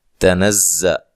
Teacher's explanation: تنزل تا کو باریک، زا کو سختی سے زور سے اور سیٹی کے ساتھ ادا کرنا ہے